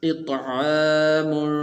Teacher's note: اب اس لفظ کے اندر کھڑی زبر آئی ہے، تو اس کھڑی زبر کو جیسا کہ پہلے بھی بتایا تھا کہ اس کو تھوڑا سا لمبا کرنا ہے، اس کو چھوٹا نہیں پڑھنا بلکہ کھڑی زبر کو لمبا کیا جاتا ہے